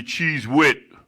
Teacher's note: that's a TH at the end, but it don't make a D sound. It makes a T sound.